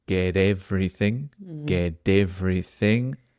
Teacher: famously the T at the end changes to a d